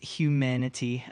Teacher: The word humanity is pronounced as humanity with the emphasis on the second syllable